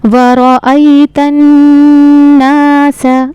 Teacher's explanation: वरअयतन नास, अब यहाँ पे ख्याल रखना है रा का, रा को हमें पुर करके यानी मोटा करके पढ़ना है।